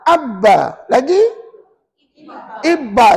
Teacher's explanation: secara basicnya huruf ba itu tak keluar ikut pangkal hidung